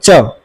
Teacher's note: तालु होता है जो तालु सड़ के जो जीभ हमारी है अगर आप च बोलेंगे च तो च जो बोलते समय जो जीभ है हमारी वो तालु से सट रही है तो इसलिए तालु व्यंजन कहते हैं।